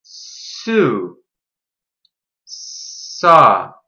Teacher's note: We put our tongue on the roof of our mouth by our front teeth, the same place we put it for T and D, except we leave a little room for air to come out. We push air out while keeping our lips and tongue tense. Your throat should not vibrate. S is unvoiced. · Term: S sound